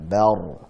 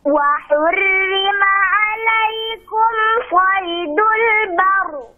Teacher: ra sukun sebelumnya fathah tebal